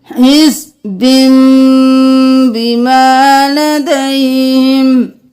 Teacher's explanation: آگے دیکھ لیجئے، اب یہاں پر بھی یہ پرپل کلر کا ہے تو ہم کیا کریں گے، ہم حزبن نہیں کریں گے، ہم با کو میم میں بدل دیں گے، حزبن، ہم تنوین کو میم میں بدل دیں گے